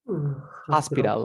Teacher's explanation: aplica la T entre dos sonidos de vocales. Suena como R.